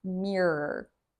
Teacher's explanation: Even for children who are native speakers and are learning how to speak, R I think is the last sound that they learn because your tongue has to pull back in your mouth to make that R sound. Even when I say it now, my tongue pulls back R R and that is a very difficult sound to make. · And so my tongue pulls back twice